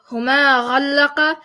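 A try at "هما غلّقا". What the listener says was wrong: Huma ghallaqa is too short.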